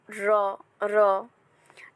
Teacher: যে ব্যঞ্জন ধ্বনি উচ্চারণে জীভের নিচের অংশ দাঁতের মূলে আঘাত বা তারা করে তাকে তারণজাত ব্যঞ্জন ধ্বনি বলে যেমন র র নাসিক্য ব্যঞ্জন ধ্বনি